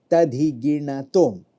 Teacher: You have to roll your tongue and hit it hard. It's a retroflex action.